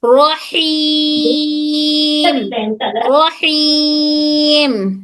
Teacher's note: یہ ہا حلق کے درمیانی حصے سے